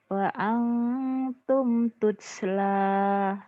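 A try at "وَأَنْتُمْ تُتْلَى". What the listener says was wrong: Oh benar, pintar.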